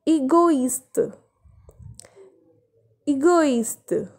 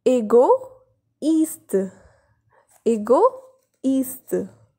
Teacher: Here we are pronouncing O and I separately. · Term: accent tréma